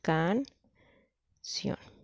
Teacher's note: Entonces, y eso puede ser viceversa, o sea, puede haber una vocal cerrada más una abierta, como en el caso de la palabra canción. La palabra canción tiene aquí un diptongo en el que encontramos una vocal cerrada y una vocal abierta. · entre la sílaba can y sion, la más fuerte es sion